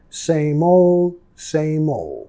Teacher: Nota muchas veces la D al final es muy suave o ni lo vamos a pronunciar